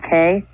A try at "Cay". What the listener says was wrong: Key. The way you pronounce it is Key, not K. It's spelled C-A-Y. But it's pronounced Key.